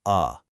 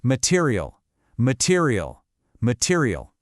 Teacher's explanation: it is a super short, weak, kind of lazy sound. It's a sound vowels make when they aren't stressed. It basically sounds like a soft uh Just look at these words. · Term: schwa sound